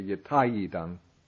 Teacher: The E becomes ya when preceding another vowel sound.